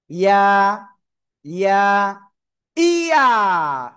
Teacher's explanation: জিহ্বার মধ্যখানা, তারপর আবার উপরে তালুর সাথে লাগিয়ে জাস্ট এক আলিফ টেনে পড়তে হবে।